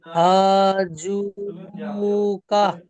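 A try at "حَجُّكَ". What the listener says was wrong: মাশাআল্লাহ, এটা ঠিক হয়েছে, খুব সুন্দর হয়েছে।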